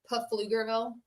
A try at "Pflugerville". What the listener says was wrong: Puff P. Pflugerville. The P is silent, which is never happens in this house, you know.